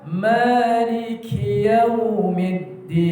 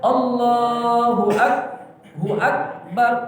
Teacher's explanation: Jadi kalau ka ini dia sifatnya hamas, Jadi bacaannya harus berdesis, mengeluarkan angin.